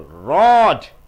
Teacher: D is a voice consonant. You are pulling the vowel.